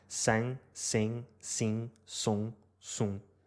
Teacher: Basta substituir a vogal [ɪ] da palavra inglesa de sing por estas 5 vogais, e obtemos as 5 vogais nasais portuguesas